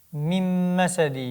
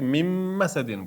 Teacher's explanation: Tushib qolmaydi, keyingi harfga aylantirib yuboramiz buni nunni. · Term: idg'om